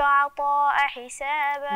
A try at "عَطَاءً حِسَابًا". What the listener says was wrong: ازاي هو انت تشيلي التنوين وتحطي التنوين ليه